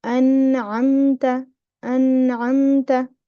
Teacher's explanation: There is ghunna, but it is naqis, not complete. So you will not spend too much time. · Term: ghunna naqis